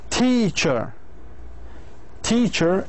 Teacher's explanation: the second syllable is weak it is unstressed syllable